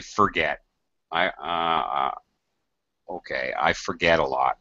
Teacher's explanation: Sometimes we don't even really pronounce the R